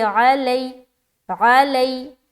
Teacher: لئی میں یائے لین ہے تو نرمی کے ساتھ جلد ادا کرنا ہے، یہ چیز کا خیال رکھنا ہے.